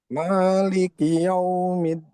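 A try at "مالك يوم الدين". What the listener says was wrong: Jangan yau. Jadi nggak ada sengaunya, nggak ada sengaunya. Yau, lewat mulut. Yau, yau.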